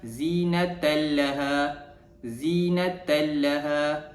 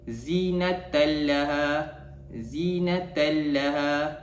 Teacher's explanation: memasukkan bunyi tanwin tersebut ke dalam huruf lam tanpa dengung